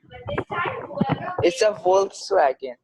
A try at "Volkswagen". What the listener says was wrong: Yeah, you don't say with the V, you say with F, right?